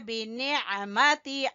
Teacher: आइन को गले के दरमियान से अदा करेंगे